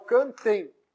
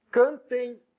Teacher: É o som do E junto com I. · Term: ditongo